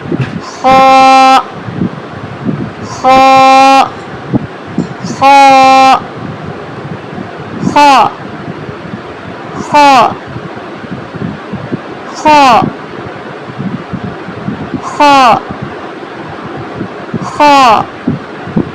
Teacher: हलक पे जोर दें और मुंह को गोल करके पुर करके पढ़ना है।